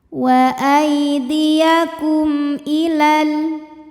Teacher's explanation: Namun panjangnya hanya saat berhenti. Kalau washal jadi pendek lamnya, madnya gugur. Kenapa karena ada pertemuan dua sukun. · Di sini hurufnya adalah huruf hamzah. Maka mim sukun kita bunyikan dengan jelas. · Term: izhar syafawi